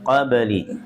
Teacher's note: baknya qalqalah sugro. Dipantulkan